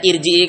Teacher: Sebelum ro sukun itu kasroh, namun yang kasroh ternyata hamzah wasol, maka dibaca tebal.